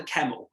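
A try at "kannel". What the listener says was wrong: Connell with an N.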